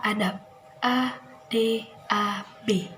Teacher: pada kata adab dia tidak dilafalkan sebagaimana huruf b tapi dia diucapkan sebagaimana huruf P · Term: netralisasi